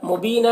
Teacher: व इस्मम, देखिए यहाँ पर भी इदगाम नाक़िस हो रहा मम में गुन्ना के साथ पढ़ेंगे. मुबीना यहाँ पर या मद्दा है, एक अलिफ के बराबर खींच कर पढ़ेंगे